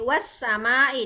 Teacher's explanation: dari huruf waw langsung nyambung ke huruf sin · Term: alif lamnya menjadi hilang